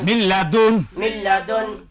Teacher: মিম সাকিনের পরে ঈদগাম বেলাগুন্নার দুই হরফের এক হরফ লাম আসিয়াছে অতএব নুন সাকিনকে গুন্না ব্যতীত ঈদগাম করিয়া পড়িতে হয়